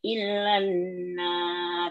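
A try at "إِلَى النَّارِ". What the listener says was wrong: Tidak boleh illa, tetapi ilannar. Ilannar.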